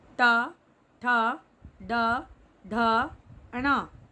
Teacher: इनका उच्चारण स्थान है मूर्धा, यानी वायु मूर्धा को स्पर्श करते हुए बाहर निकलती है।